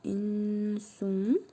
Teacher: İhva qaydasına görə nun hərfini bir əlif miqdarı uzadaraq burnumuzda tələffüz edirik.